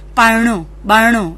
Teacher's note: ણ પૂર્વે આવતા ર બદલે ડબલ ણ થાય છે